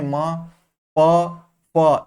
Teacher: तो देखिए, म आप अगर नहीं भी पढ़े हैं तो म को बोल के आप देख सकते हैं, म, प, फ, इनमें आप ओठ का, अपने होठों का प्रयोग कर रहे हैं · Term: ओष्ठ